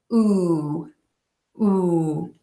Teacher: and they are less rounded than in the long o sound where I would kind of characterize the lips as being a little more puckered